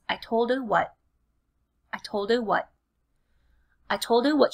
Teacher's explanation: that strong T is so often deleted and held back